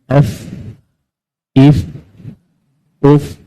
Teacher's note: So menyekat udara daripada menghembus sepenuhnya. Itulah fa.